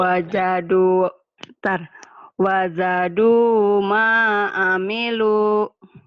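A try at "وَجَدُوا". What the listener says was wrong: Jimnya jangan wajadu, wajadu, wajadu. Keras semua. maknya panjang.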